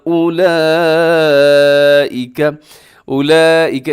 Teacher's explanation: اس میں بڑی مد ہوتی ہے جسے مد متصل کہا جاتا ہے، جس کا کرنا واجب ہوتا ہے۔